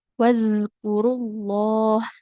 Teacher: Ujung lidahnya menempel ke ujung gigi seri atas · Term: huruf dalal sukun, huruf zal sukun